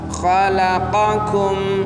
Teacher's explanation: qa itu di tenggorokan, kum itu di atasnya, di atas tenggorokan